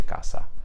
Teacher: in Northern Italian it is pronounced as a S no matter where it is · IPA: [kasa]